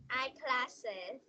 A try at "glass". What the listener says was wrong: Glass, not glasses, glass.